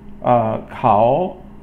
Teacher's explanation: Kao, third tone, which is falling and then rising